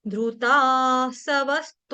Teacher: व के ऊपर जो अनुस्वार यानी कि बिंदी है उसका उच्चारण करेंगे आधे व